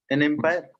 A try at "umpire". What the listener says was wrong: An umpire, not empire, umpire. why? Because when we pronounce this word, we pronounce it as a vowel.